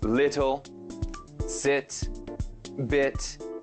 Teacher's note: the English short I is somewhat different from the Russian I. It is pronounced closer to the sound E.